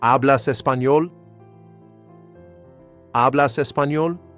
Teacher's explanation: just use rising intonation with the same word order. You speak Spanish as a question.